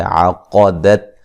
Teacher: قاف کو موٹا ادا کریں گے